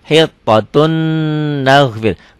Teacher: Tulisannya hittotun ada n-nya, n-nya masuk ke n berikutnya. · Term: idgham bigunnah